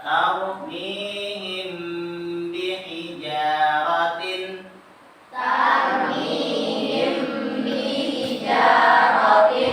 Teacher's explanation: Huruf mimnya ditahan ketika bertemu dengan ba. Mim sukun kita bertemu dengan ba, tahan. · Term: ikhfa syafawi